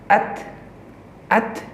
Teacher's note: Akan terlebih terdengar suara sifat Hamas. atau keluar Nafas.